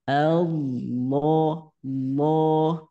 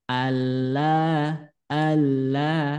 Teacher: hukum tafkhim tebal jangan sampai Alla Alla nah gitu ya hati-hati karena lafaz Allah setelah fathah maka harus dibaca tebal